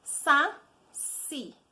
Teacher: A última sílaba é a sílaba tônica, por isso que ela é uma oxítona